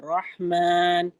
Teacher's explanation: रहमान में र को मोटा और ह की अदाएगी और बहुत ज्यादा हलक पे जोर नहीं देंगे।